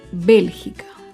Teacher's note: Bélgica se acentúa en la antepenúltima sílaba. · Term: palabra esdrújula